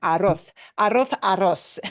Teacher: Mm. La Z, that Z always makes the th sound